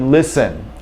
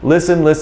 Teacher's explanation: There is no T sound at all. You'll confuse your American listener if you add a T sound. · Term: silent